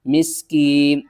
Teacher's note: سین کو ہم نے سیٹی کی آواز کے ساتھ پڑھنا ہے، میم کو سین سے ملانا ہے، میم سین زیر مس، کاف یا زیر کی، مسکین، نون زیرنی، مسکینی، اور وقف کی صورت میں نون کو ساکن کر دیں گے۔